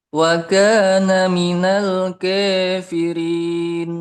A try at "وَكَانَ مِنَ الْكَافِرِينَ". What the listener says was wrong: Itu terlalu miring. Dia sudah hampir imalah kubro. Wa kana minal kafirin.